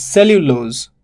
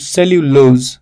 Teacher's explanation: The pronunciation is cellulose. It has got 2 syllables, 1 and 2. All right, stress falls on the first one.